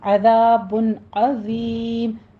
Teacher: کی آواز باریک رکھیے، را بھی پر پڑھنا ہے، عذاب عظیم، ذال بھی نرمی سے ہوگا، سیٹی کی آواز نہیں ادا کرنی آپ نے ، اور نرمی کے ساتھ اس کو پڑھنا ہے، الف مد · کے ساتھ اس کو پڑھنا ہے، الف مد ادا کرنی ہے، بن عظیم میں اظہار حلقی کرنا ہے